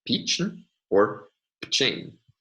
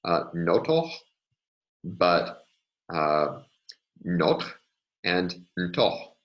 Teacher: So either the first vowel or the second vowel can alternate with 0, can alternate with nothing, so to say.